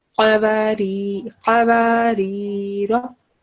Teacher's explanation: And this first one, qaf, it's qaf, not calf, not thin sound. It's coming from throat.